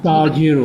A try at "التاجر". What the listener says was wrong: تاجر، التاجر، تا پہ شد ہے، تاکہ دو آواز آئیں گے، التاجر۔